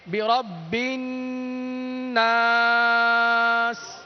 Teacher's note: با نون مشدد کے ساتھ ملا کر پڑھا جائے گا. گنہ کی مقدار 1 الف کے برابر ہے